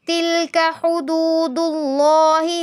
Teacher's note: لفظ اللہ پر تفخیم. تِلْكَ حُدُودُ اللَّهِ فَلَا تَقْرَبُوهَا، قوف پر قلقلہ بھی کریں گے، تفخیم بھی کریں گے، یعنی قوف کو ہلا کر بھی پڑھنا ہے اور پر بھی پڑھنا ہے.